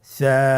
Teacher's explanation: হারাফটির মাখরাজ হলো উচ্চারণ স্থান জিহ্বার আগা সামনের উপরের দুই দাঁতের আগার সঙ্গে লাগিয়ে উচ্চারিত হয়